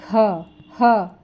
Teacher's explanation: जो महाप्राण उसमें हकार ह की ध्वनि जो होती है वो सुनाई देती है